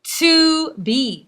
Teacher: the first syllable is to, which is the unstressed, and the second one is be, which is stressed. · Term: iambic